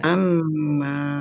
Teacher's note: Bacaan ghunah dibaca dengung ya. Amma tahan biar tampak mendengungnya.